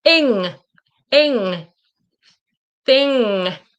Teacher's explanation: The N with the ing you can see that my tongue doesn't touch. It kind of spreads out and it goes up